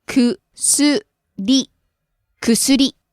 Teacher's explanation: You rise the tone at す。 薬。 りは下がらないです。Don't drop the tone at り。薬。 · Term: Pitch accent